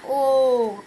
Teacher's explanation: इनमें से ओ का उच्चारण स्थल कौन सा है, ओ कहाँ से बोला जाता है हमारे पास, कंठ ओष्ठ से